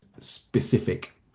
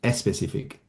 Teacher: But the where this relates to Spanish speakers is that there's um a pronunciation feature in Spanish >> where if a letter if a word starts with the letter s >> quite often um Spanish speakers or in the Spanish language you add an extra uh vowel sound to the beginning of that word. So if I think about the word specific >> in in Spanish, it sounds more like especific.